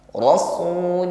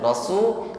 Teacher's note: diawali dengan huruf ro barisnya fathah berarti pengucapannya tafkhim ditebalkan